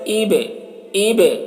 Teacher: جزم ہے تو با میں قلقلہ کریں گے